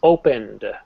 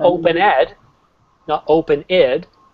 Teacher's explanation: it's the d, the voiced d. Our vocal folds here will vibrate. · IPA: /d/